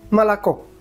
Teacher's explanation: Por ejemplo, tenemos la palabra leche que se escribe M-O-L-O-K-O, molocó. Pero como solo la última O es la tónica, las otras O se leen casi como una A